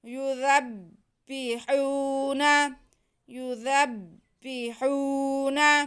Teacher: ہا پہ پیش اور واو ساکن ہے تو یہ واو مدہ ہے، اس کو ہم کھینچ کے پڑھیں گے